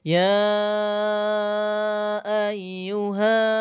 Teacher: dibaca panjang 6 harokat, yang seperti tadi ya namanya mad jaiz munfasil